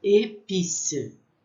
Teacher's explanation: o som com esse acento agudo, ele tem um som fechado